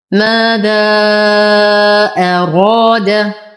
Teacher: ماذا حرف مد وبعده همز في كلمتين فالمد جائز منفصل يمد بمقدار 6 حركات بالإشباع وسمي جائزا لأنه يجوز قصره عند بعض القراء. ماذا أراد نفخم الراء بأعلى درجات التفخيم